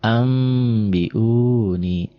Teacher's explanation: Iklab itu gampang ya, menandainya ada mim kecil. Jadi asalnya n-nya berubah jadi m.